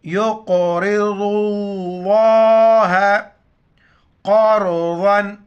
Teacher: ساتھ پڑھنا، اور ضاد کو لفظ اللہ کے ساتھ ملائیں گے۔ لفظ اللہ سے پہلے ضاد پر پیش ہے تو لفظ اللہ کو موٹا کر کے پڑھیں گے